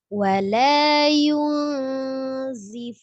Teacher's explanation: Dan ini bertemu dengan huruf zai termasuk tingkatan ikhfa yang sedang. Ditahan ya, karena dia ada dengungnya juga ketika ikhfa.